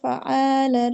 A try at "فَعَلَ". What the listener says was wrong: فا کو لمبا کیوں کرنا ہے جب کوئی ہے ہی نہیں مت کا سائن؟